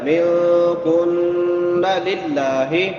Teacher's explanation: لفظ اللہ باریک ہوگا کیونکہ لفظ اللہ سے پہلے زیر ہے، زبر ہو پیش ہو تو پھر موٹا پڑا جاتا ہے، زیر ہو تو باریک ہوتا ہے۔